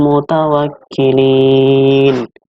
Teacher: Mutawakkilin adalah mad arid lis sukun, yaitu bacaannya dibaca panjang sepanjang 2 harokat sampai 6 harokat.